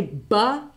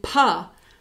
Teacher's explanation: when i say ba and pa my mouth is doing exactly the same thing the only thing that differs is this vot this timing thing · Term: voice onset time